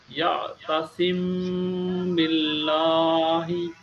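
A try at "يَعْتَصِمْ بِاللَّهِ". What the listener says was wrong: লাম মোটা হবে না, লাম চিকন করে হবে, লাহি।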